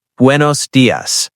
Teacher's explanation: Notice it sounds like bu the u in buenos has a soft w sound